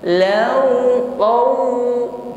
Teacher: Tawallaw qauman, ada banyak di situ harful lin ya, huruf lin, yaitu waw sukun yang sebelumnya ada harokat fathah. Law, di situ harful lin, kita ucapkan dengan ringan ya, landai tanpa ada penekanan. Jadi waw sukun sebelumnya fathah, lin ya, lunak, ringan, jangan diucapkan dengan tekanan seperti ini.